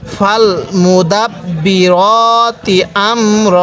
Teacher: এই র এর মধ্যে আমি এক আলিফ টান দিছি